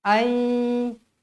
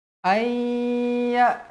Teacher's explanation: Nun kosong bertemu dengan huruf ya. Hukumnya idgham ma'al gunnah. Pun wajib dibaca dengung dengan kadar 2 harakat.